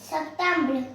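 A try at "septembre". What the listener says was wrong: सितंबर. ई का ज़्यादा उच्चारण नहीं होता है, BR तक ही उच्चारण रहता है. सितंबर.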